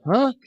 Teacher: an unstressed mid-central vowel such as the usual sound of the first and the last vowels in the english word america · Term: schwa